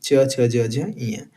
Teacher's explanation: च वर्ग में पांच वर्ण आएंगे। च, छ, ज, झ, ञ। इनका उच्चारण स्थान क्या है? तो तालव्य।